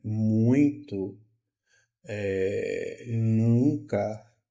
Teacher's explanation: Eu tenho o M e o N que já fazem isso. Quando eu falo muito, nunca, eu sinto que o ar sai pelo meu nariz.